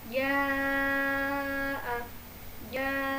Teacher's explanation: Jadi teman-teman bacanya dibaca panjang selama 4 harokat.